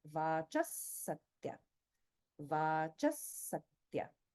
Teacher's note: Whereas in the word Vachaha, because it's followed by the Sa in Satya, this Visarga is pronounced exactly like Sa, and there's holding there